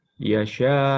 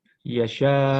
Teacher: Rasa. Nah, yang betul itu adalah ditekan kuat ketika hamzah sukun di akhir ayat atau waqaf. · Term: nabar